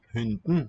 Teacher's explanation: It's not a full vowel there in syllable 2, but just consonants serving as vowels like we do in English in a word like button or bottom.